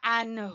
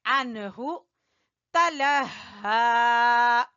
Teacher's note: عنہ جلدی پڑھنا ہے، نون کے بعد یہاں کوئی غنہ نہیں کرنا، ہا پڑھیں گے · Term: اظہار